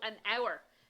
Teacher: in the word an hour we don't hear the H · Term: silent h